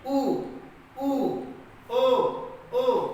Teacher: वृत्तमुखी कहते हैं या वृत्ताकार स्वर कहते हैं। जैसे उ, ओ, देखिए होंठ हमारे एकदम गोल हो जा रहा है हमारा